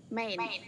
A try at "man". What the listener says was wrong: Mà rộng miệng nữa ra. Man.